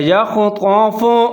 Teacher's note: یکاد البرق یخطف ابصارهم، یا کے اوپر زبر ہے، خا ساکن ہے، یخ، تو کے اوپر زبر ہے، فا کے اوپر پیش ہے، یخطف، خا کو موٹا پڑھنا ہے، تو کو موٹا پڑھنا ہے